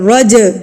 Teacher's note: سے پڑھیں گے رج ٹھیک ہے نہ کہ رج نہیں پڑھنا چے کی ساؤنڈ نہیں دینی یہاں پر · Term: قلقلہ